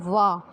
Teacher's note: ओठ और दांत टच होते हैं, इसलिए इनको दंतोष्ठ बोला जाता है। यानी दंत जो है हमारे दांत जो हैं वो ओठ को टच करते हैं, वा, ठीक है।